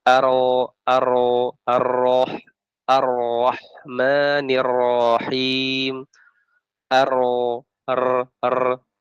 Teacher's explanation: boleh 3 getaran setelah itu hilang, ya, masuk ke huruf yang berikutnya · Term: fasih